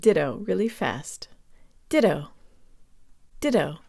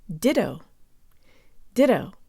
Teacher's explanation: it almost helps to think of the two T's as a D sound